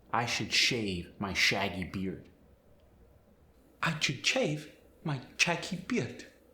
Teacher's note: The SH sound is going to change to the CH sound.